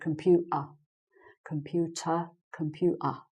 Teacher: it because you can hear I'm missing out the team and doing a glottal in my throat instead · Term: glottal stop